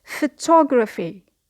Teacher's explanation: So the stress here is on the second syllable